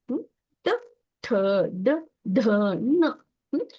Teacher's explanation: ಟ ವರ್ಗದಲ್ಲಿ ಮಾತ್ರ ಸ್ವಲ್ಪ ರೋಲ್ ಆಗಿ ಮೇಲೆ ಅಂಗಳಕ್ಕೆ ಬಡ್ಕೊಳ್ಳುತ್ತೆ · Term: ಮೂರ್ಧನ್ಯ